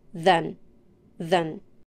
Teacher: is pronounced with the schwa sound for the voice th sounds you put your tongue between your teeth use your vocal cords and blow the air through your tongue and teeth your tongue should be relaxed and lightly vibrate it's a function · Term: voiced th